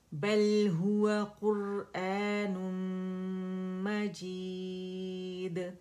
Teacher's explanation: بل توسط لام کا شو کریں گے, ہا کے مخرج پہ جائیں گے, قاف موٹا ہوگا